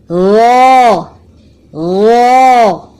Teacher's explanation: زبان کی نوک کے اوپر والے حصے کو اوپر کے 2 دانتوں کے کنارے سے لگایا، مضبوطی سے لگائیں اور پھر جدا کرتے ہوئے نرم آواز میں کہیں